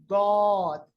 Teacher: ضاد کو جب ہم پڑھیں گے نا اس کو لینتھننگ پڑھتے ہیں، اس کی لمبائی کے ساتھ اس کو ادا کرتے ہیں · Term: صفت استطالہ